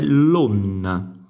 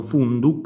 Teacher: quella ND per assimilazione, si dice così in questo fenomeno fonetico, abbiamo una NN, quindi la doppia N, ND diventa NN.